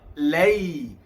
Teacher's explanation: Sebutannya agak bertempoh lembut, lunak bacaan lin.